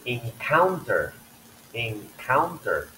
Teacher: the second syllable the K is aspirated because it's a k is at the beginning